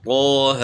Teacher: اب طا اور ہا کے اوپر کھڑی حرکات ہیں، ان کو ایک الف سے زیادہ نہیں کھینچنا۔